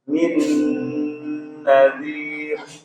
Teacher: Huruf dal itu huruf yang istifal tipis ya